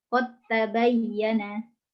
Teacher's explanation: Dal sukun diidghamkan ke dalam ta dengan sempurna, yaitu idgham kamil, yakni menjadi huruf kedua yang ditasydid.